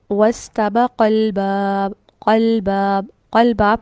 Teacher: ہم نے حرف مدہ کو ہی ڈراپ کر دیا۔ لکھنے میں آ رہا ہے، پڑھنے میں نہیں ہے۔